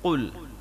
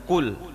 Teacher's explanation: Paling belakang huruf qaf, di depan sedikit huruf kaf.